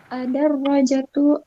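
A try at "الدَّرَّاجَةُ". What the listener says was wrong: Panjang ya, at-tarrojatu.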